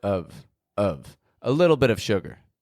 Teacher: Now, when we say of, just O-F, of, we're using a grammar word. That means it doesn't need to be stressed. It gets a schwa. That's like this, real quick, quiet, weak sound, And the F on the ending doesn't actually sound like an F.